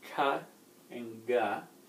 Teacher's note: And so it's kind of in the back of your mouth. If you say ga, it's the same as ka, but you're adding some vocal cords to it. You're adding some resonance from your throat to it.